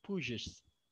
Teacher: Contoh kalau push, ya push. Kalau ditambahi IS maka menjadi pushes. Tulisannya ada IS-nya, bacaannya bunyinya ada Z.